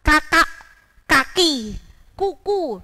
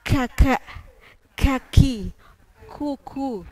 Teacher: kalau huruf k itu masuk pada hams jadi harus ada aliran udara yang keluar